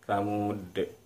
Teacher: Nah, karena kata Tsamud ini diakhiri huruf dal, maka ketika kita matikan atau kita sukunkan, muncul hukum qalqalah. Qalqalah, jadi dia mantul bunyi dalnya.